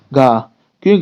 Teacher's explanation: घ हमारे कंठ से आता है